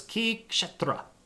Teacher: you kind of make a click sound for the K, and then this S is an SH sound. So it's Ki Kshetra, and you kind of flick the R.